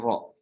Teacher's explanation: dia satu-satunya huruf yang dia ketika di diucapkan itu disertai dengan bergetarnya ujung lidah